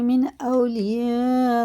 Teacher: مد متصل ہے، اس کے بعد حمزہ آ رہا ہے، اور الف سے پہلے زبر ہے، تو یہ 5 الف کے برابر کھینچ کے پڑھیں گے